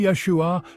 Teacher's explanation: Phonetically, it's pronounced Yeshua, with the emphasis on the first syllable.